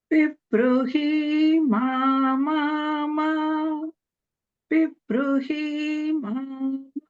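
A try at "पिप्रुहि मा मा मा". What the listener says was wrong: The swaras are good. Only thing was the he is hrasva. So you don't need to elongate that one.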